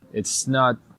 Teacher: It's not. So this is using a held T or a stop T, where basically you tense your throat or your chest so that way air cannot escape.